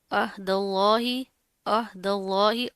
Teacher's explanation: عہد اللہ، عہد اللہ، عین کی آواز کو واضح کریں گے. لفظ اللہ سے پہلے زبر آ رہی ہے تو اس کو موٹا پڑھیں گے